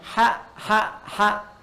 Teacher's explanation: mengambil nafas cukup panjang jadi udara cukup panjang kita keluarkan sehingga saat kita mengucapkan ha itu kurang lebih 75% udara kita keluar